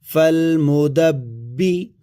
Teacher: اور اس کے بعد با ہے، با پر زیر ہے، با مشدد ہے، با پر شد ہے جس کی وجہ سے با کو سختی کے ساتھ زور دے کر کے پڑھا جائے گا